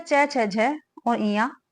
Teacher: कौन सा उच्चारण स्थान है ये हमारा तालव्य है